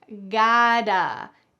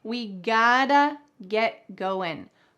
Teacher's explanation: In American English, the t changes to a d.